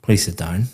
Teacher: please sit down, very flat intonation going down.